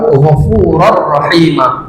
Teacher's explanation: Dimasukkan tanwinnya ke rnya tapi tidak didengungkan tidak lama ya. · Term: idgham bila ghunah